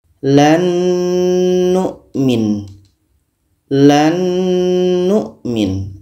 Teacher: Nun ini sudah sempurna masuknya karena bertemu dengan huruf yang sama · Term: idgham Kamil